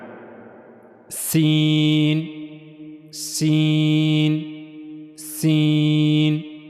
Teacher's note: जबान की नोक का जो ऊपर वाला हिस्सा है यह दो अगले दांतों के अंदरूनी हिस्से के साथ जाकर मिलेगा नहीं बल्कि थोड़ा सा फासला रहेगा जबान और दांतों के अंदरूनी हिस्से के दरमियान तो वहां से सीन अदा होगा सीन सीन सीन को अदा करते हुए एक चीज का ख्याल रहे एक तो यह बारीक पढ़ा जाएगा और इसके साथ-साथ साथ सीन को अदा करते हुए सीडी की आवाज आएगी।